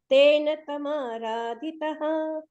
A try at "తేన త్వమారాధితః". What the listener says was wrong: మీరు త్వా పలకట్లేదు. తేన త్వమారాధితః.